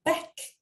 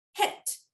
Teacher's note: hat 끝에 이렇게 T처럼 무성음 글자가 오면 이 모음은 짧은 소리가 납니다